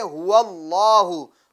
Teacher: تو دیکھیں آپ اسکرین پر دیکھ رہے ہوں گے کہ لفظ اللہ کے لام سے پہلے والے حرف یعنی واو پر زبر ہیں تو لفظ اللہ کا لام کیا کریں گے, پور پڑھیں گے یعنی موٹا پڑھیں گے